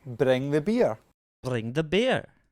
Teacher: in a glaswegian accent the r is generally tapped that means the tongue taps off the roof of the mouth